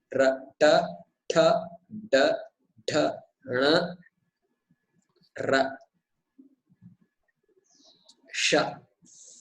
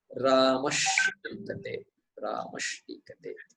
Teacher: Cerebral, so the tongue, tip of the tongue touches the roof of the mouth.